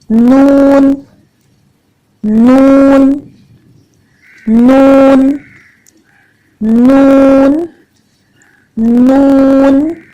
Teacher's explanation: जबान की नोक को ऊपर उठाएं, ऊपर के 2 दांतों के जो मसूड़े हैं वहां पे जबान की नोक को रखें और फिर अदा करें नून नून। तो जबान की नोक और ऊपर वाले 2 दांतों के मसूड़े, बस इतना सा इस्तेमाल होगा।